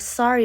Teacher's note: Americans tend to pronounce the word sorry with a more clipped o sound